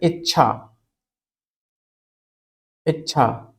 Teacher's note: छ से पहले च की ध्वनि आनी ही आनी है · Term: आधा चा